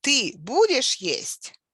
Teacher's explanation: So the tone rises sharply on the stressed word. In this case, будешь is a stressed word.